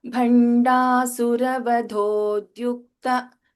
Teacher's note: Okay, in the second line, in the Bandhasura Vadhodyukta, Vadho, Dha is Mahaprana, but the next letter is Alpa Prana, Da with Ya and Ukara.